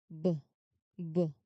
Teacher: There is a vibration, so this is voiced.